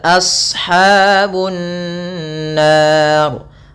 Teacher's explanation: Lafal shadnya tebalkan, tampakkan daripada makhraj dan huruf shadnya, jangan jangan sin